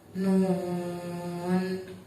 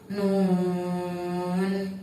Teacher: Di situ ada mad bertemu dengan sukun dalam satu huruf, maka cara bacanya panjang. Panjangnya 3 alif atau 6 harokat. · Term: mad lazim harfi mukhaffaf